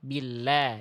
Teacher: Lam itu huruf tipis. Jangan l tapi la. Lidahnya dalamnya rileks ya.